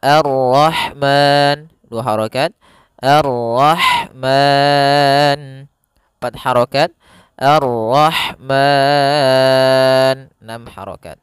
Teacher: boleh memanjangkan 2 harokat pada lafal ma, boleh juga 4 harokat, dan boleh pula 6 harokat